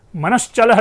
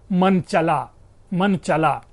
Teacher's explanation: तो च का जो श है, दंत तालव्य श, वो तालव्य श विलुप्त होकर के मन चला शब्द बन रहा है। मध्य व्यंजन का लोप हो रहा है।